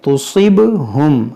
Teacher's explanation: صاد کو موٹا کریں